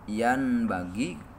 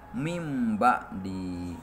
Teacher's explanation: Patokanana di mana-mana nun pae atawa tanwin mayunan ba maka gantikeun nun pae atawa tanwin kana mim sarta kudu make ihfa. Contona nun pae mayunan ba yan bagi tapi dibacana harus yam bagi soalna naon ditukerkeun kana mim. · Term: iklab